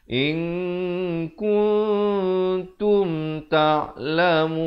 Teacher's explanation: Yang betulnya in kuntum, bunyi tum izhar syafawi. Yang tum ini pula jangan 2 harakat.